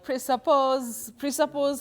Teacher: that S takes the voiced sound Z.